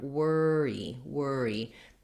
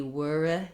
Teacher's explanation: to be wor you don't want to relax that second syllable still a bright tense e vowel even though it's not stressed and even though it's short